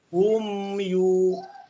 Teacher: Mim mati ketemu dengan ya, jangan berhenti suaranya. Ayo mengalir.